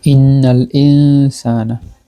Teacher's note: ইন্নাল ইনসানা ইখফা করলাম আমরা, নুন সাকিনের মাখরাজটা সিনের মাখরাজের সাথে নিয়ে গেলাম গুন্নার সাথে